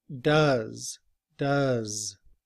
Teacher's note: uses that upside down V which sounds like uh like in cup